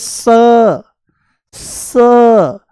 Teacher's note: ये दंत्य सकार है, दांतों से बोला जाता है।